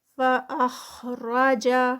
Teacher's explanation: خا ہیوی را ہیوی جیم لائٹ